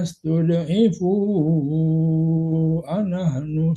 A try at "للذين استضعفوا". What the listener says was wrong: dotnya nggak boleh dipantulkan ya Pak. Lillazina istud'ifu, jangan tudot.